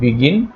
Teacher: এই গিন অংশে শেষ স্ট্রেস বা জোর পড়েছে